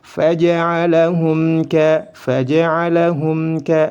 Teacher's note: mim sukun bertemu dengan kaf dibaca izhar, dibaca jelas karena dihukumi izhar syafawi.